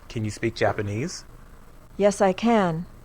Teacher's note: at the end of a sentence can is stressed